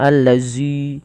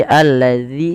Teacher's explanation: jangan menebalkan zanya jangan alladzi tapi alladzi tipis